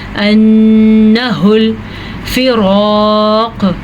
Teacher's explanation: रॉ को पुर पढ़ना है और अलिफ मद्दा की वजह से रॉ को खींच के पढ़ना है।